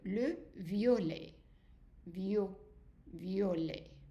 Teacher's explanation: ET at the end is an A sound all the time. We never pronounce that T if you have ET. And also the I followed by a vowel becomes a Y sound.